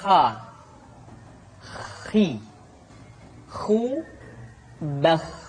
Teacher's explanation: adalah huruf Kha Kha dikeluarkan dari pangkal tenggorokan Kha pangkal tenggorokan diucapkan dengan mengalir nafas atau lebih praktisnya pengucapan huruf k persis terdengar seperti orang yang tidur dalam keadaan mengorok